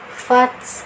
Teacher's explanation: pengucapan fa-nya ada anginnya karena dia mempunyai sifat hamas, ada aliran udara atau nafas yang mengalir. Fats. Nah, fats.